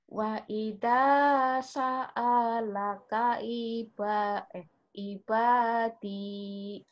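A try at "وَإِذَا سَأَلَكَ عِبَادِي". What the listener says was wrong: Benar, ibadinya di sini aja nih, Bu, nyambarnya nih, Bu. Sa'alaka, enggak ada yang panjang di sini, Bu. Sa'alaka lagi. sa'alaka. Sa'alaka, bukan salaka. Sa'alaka. Wa'ida sa'alaka ibadi. Wa'ida sa'alaka ibadi. Yang penting panjang pendeknya bener dulu ya.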